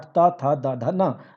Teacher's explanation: दाँत से टच होता है आपका जीवा का आगे वाला पार्ट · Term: त वर्ग